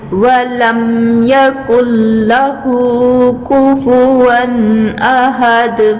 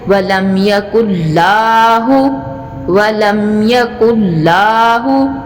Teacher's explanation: लाम जो है इसको सख्ती से पढ़ा जाएगा, लेकिन एक अलिफ की मिक़दार लंबी नहीं होगी। इसको लाम ज़बर ला जैसे होता है ना, इसी तरह से ये अदा करेंगे।